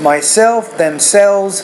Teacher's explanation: With self, the stress is on the second syllable of those words.